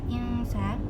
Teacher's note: ada nun sukun bertemu dengan huruf ifa yaitu sin, maka dibaca ifa atau samar